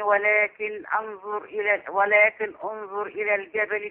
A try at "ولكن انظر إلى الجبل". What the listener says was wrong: ولكن انظر، احذف الألف الوسط دي، ولكن انظر.